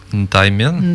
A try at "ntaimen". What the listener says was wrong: Ntaimen. Men. Comme s'il n'y avait pas de i. Ntaimen.